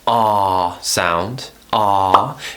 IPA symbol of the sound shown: ɑː